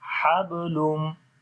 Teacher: Hablum. On the ba we make weak qalqala as the qalqala letter is coming in the middle of the word. This is, so here we make weak qalqala.